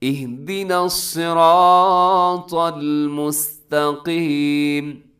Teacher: صاد موٹا رکھنا ہے، آگے را بھی موٹا ہے · مستا میں تا باریک ہوتا ہے، قاف آگے پھر موٹا آ گیا